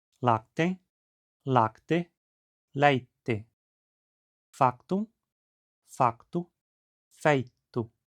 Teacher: o ditongo ai se abrindo para ei